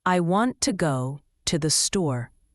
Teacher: The small words to and the become very fast and soft. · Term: stress-timed